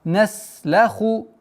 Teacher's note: Нужно немножко удержать син, потому что полноценное свойство свиста нужно выговорить.